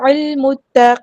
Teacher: لام یہاں پر لام قمریہ ہے، اس کو ہم ظاہر کریں گے ، متقین، قاف پر ہیوی لیٹر پورا ادا کریں گے، اور